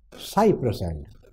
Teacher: cy is stressed, press is not, and is not